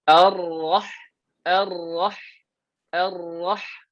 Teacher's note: Jangan sampai dia terlalu banyak sangat dia punya r-nya. R-nya jangan dibanyakkan, dikemaskan.